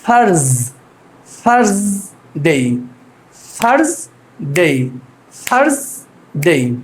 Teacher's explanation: এইটার প্রনাউন্সিয়েশনটা হচ্ছে এই যে উপরের দাঁতের সাথে জিহ্বা লাগিয়ে